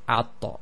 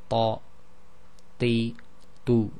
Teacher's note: It has a stoppage of breath, i.e. there's no hams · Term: emphatic